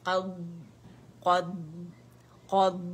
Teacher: اس میں استطالت ہے, آواز چلے گی